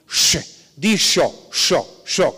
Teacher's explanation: se llama prepalatal fricativa sorda, que se pronuncia algo así como sh, di sho, que es el origen de dijo.